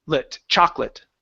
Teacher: so the O in chocolate is not pronounced the second o that is the first one is so it's